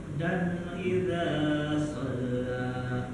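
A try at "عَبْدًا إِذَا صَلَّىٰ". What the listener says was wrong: Di situ panjangnya 2 harokat aja Pak. Jadi 2 harokat itu kita ketahui satu ayunan. Abdan idza shalla. Itu udah agak kelebihan Pak. Abdan idza shalla. Jadi kalau abdan idza shalla itu dah lebih depan. Ba di situ kolkolah. Di kolkolah itu dipantulkan. Adapun huruf kolkolah itu ada 5. Baju di toko. Jadi cara bacanya dipantulkan.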